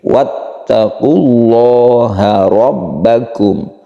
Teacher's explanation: Lafaz Allah yang sebelumnya ada dhammah, maka dibacalah dia itu menjadi tafkhim atau tebal. Wattaqullah, jadi bukan wattaqullah tapi wattaqullaha rabbakum.